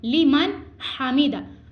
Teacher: نون ساکن کے بعد ہم نے غنہ نہیں کرنا, ہم نے اس کو نون کو ظاہر کرنا ہے